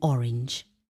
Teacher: The pronunciation of the short O involves an open rounded mouth. Visually, the letter O is a circle reflecting the mouth shape for its sound.